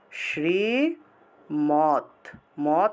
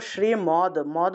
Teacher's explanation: আছে না এটাকে আমরা ভাঙলে দ এর নিচে হসন্ত আসে আর এই হসন্ত যুক্ত দ টাকে ততের মত উচ্চারণ করতে হয় অর্থাৎ এইভাবে শ্রী মত মত তারপর শ্রীমত শ্রীমত উচ্চারণ করতে হবে